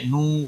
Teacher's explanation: واو مدہ ہے ایک الف کے برابر کھینچ کر پڑھیں گے